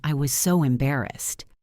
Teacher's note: The voice went down and sounded heavy. That signals a negative emotion.